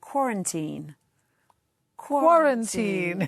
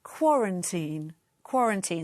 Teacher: The stress is on the first syllable, so quarantine.